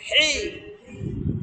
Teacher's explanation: চাপ দিয়ে উচ্চারণ হি গলার মধ্যে চাপ খাবে